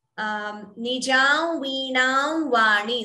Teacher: So the anuswara, instead of full, it gets that nasal tone because anuswara followed by va.